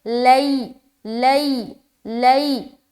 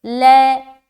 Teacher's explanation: نہ ہم لمبا کریں گے لین کو، نہ ہی ہم سختی کے ساتھ ادا کریں گے، اور نہ ہی ہم آواز کو مجہول بنائیں گے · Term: یا لین